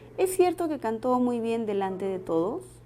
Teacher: el tono final de la oración es descendente y podríamos cambiarlo a una pregunta